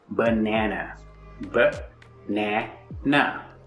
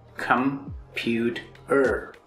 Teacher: Now, if you see, we are not stressing on a specific part of the word cat because it's only one unit. But for banana and computer, we are stressing the middle syllable. B-nana. The middle na is stressed. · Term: stressed syllable